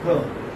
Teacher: R is not pronounced